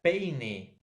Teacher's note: va a ser una vocal abierta más una vocal cerrada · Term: decreciente